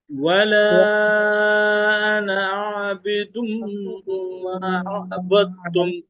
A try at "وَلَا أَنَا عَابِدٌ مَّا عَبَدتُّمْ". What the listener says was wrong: عابدم نہیں ہونا چاہیے، عابدم. یہاں پہ عین. ولا أنا عابدم.